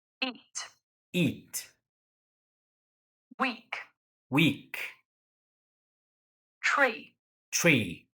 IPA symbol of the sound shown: i: